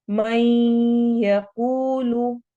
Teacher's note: मई इदगाम हो रहा है गुन्ना के साथ।